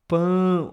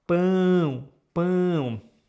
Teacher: the sounds need to pass through your nose and your mouth at the same time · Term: nasal sounds